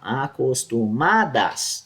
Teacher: tu percebe que o má é mais acentuado